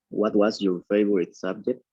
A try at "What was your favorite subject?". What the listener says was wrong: Ok, pero usted está subiendo su entonación al final.